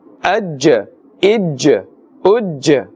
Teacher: we are pronouncing with a bouncing or echoing sound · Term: huruf qalqala